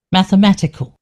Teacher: they definitely pronounce the E, the E sound, but it's more of a schwa sound